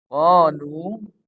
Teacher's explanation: qaf ini dibaca panjang 2 harokat